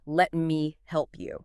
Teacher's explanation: That's another super common reduction. The word you when it's unstressed in a sentence, which it often is, frequently reduces to a weaker form